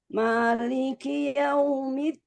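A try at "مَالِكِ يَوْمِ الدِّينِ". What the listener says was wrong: Nah, jangan masuk hidung. Maliki yaumiddin.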